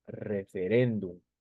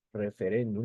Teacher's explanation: la mayor fuerza de voz está en la penúltima sílaba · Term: palabra grave